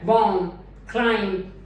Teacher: how the ba sound is silenced in certain words when it comes immediately after ma, bomb, climb, it never gets produced.